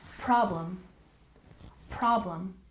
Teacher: and problem we stress the first syllable